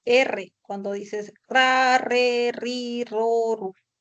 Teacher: Se llama modo vibrante porque lo que genera vibración es la lengua. La lengua vibra en la zona alveolar. Entonces, tiene ese sonido de la vibrante simple, que es el sonido de R. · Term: vibrante múltiple